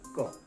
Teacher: जैसे क कहते हैं तो कंठ बंद होता है, खुलता है, क बंद होगा, खुलेगा, क।